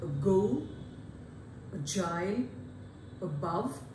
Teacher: It is again unrounded but a neutral vowel, and above all you find that this is a central vowel.